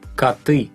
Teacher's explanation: The thing about o is it sounds like a when it's not stressed.